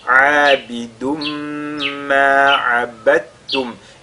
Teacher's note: la lettre da ici va fusionner dans le ta qui suit